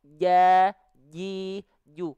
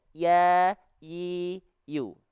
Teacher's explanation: kalau huruf jim dia dilafalkan tengah lidahnya nempel ke langit-langit, di atasnya nempel. Ja, ji, ju. Kalau huruf ya nggak nempel, cuman ngangkat saja. Ya, yi, yu.